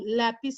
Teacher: la sílaba tónica la encontraremos en la penúltima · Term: las palabras graves